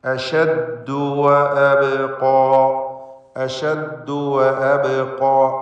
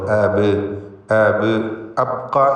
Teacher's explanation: സാക്കിനത്തായ ബാ ഖൽഖല സുഗ്റ നൽകി ബാഇൻ്റെ സുക്കൂനിനെ ഹറക്കത്ത് പോലെ ചലിപ്പിച്ചുച്ചരിക്കണം. ശബ്ദം ചലിപ്പിച്ചുകൊണ്ട് അബ് അബ് അബ്ഖ എന്ന് പറയരുത്.